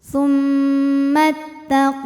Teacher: idgham mutamilain ya karena ada wau sukun bertemu dengan wau berharakat maka wau pertama masuk ke wau kedua tidak disertai dengung cukup ditekan